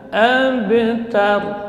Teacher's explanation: Huruf qalqalah karena terletak di tengah, maka pantulannya yang mengalir. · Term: qalqalah sughra